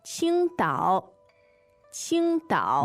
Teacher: the tones there are first and third